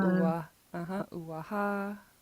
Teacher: so it's low, low, high